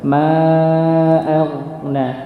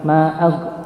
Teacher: Selain itu tidak boleh ada yang dipantulkan ketika sukun, nggak boleh ya, tidak diperkenankan untuk dipantulkan. Maka huruf gha ini jangan dipantulkan. Ma'aghna, dia mengalir.